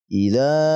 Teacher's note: dzal yang berharakat fathah lalu diikuti dengan Alif maka kita baca panjang 2 ketukan karena ini adalah Mad Thobi'i Ida ya dibaca panjang 2 ketukan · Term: mad tabi'i